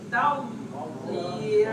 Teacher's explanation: ada suara pemanjangan pergesekan lidah dari arah belakang ke depan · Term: rokoh